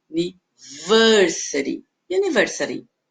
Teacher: aqui o principal é no ver, ele é mais longo, mais alto e mais agudo